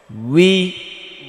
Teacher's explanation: واو زر وي ওয়াওটা বেশি বেশি করে পড়তে হবে, ওয়া উই, ওয়া উই, উই, ওয়াও জের উই উই, এমনটা বলা যাবে না, ঠোঁট গোল করে বলতে হবে, ঠোঁটটা অনেক রাউন্ড করে অনেক গোল করে তারপর আবার ছেড়ে দিতে হবে স্বাভাবিক অবস্থায়।